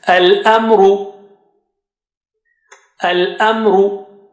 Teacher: ra with dhamma, which is thick here in this case.